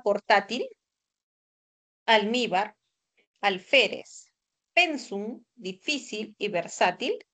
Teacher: La mayor fuerza de voz va a recaer en la penúltima sílaba. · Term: palabras graves o llanas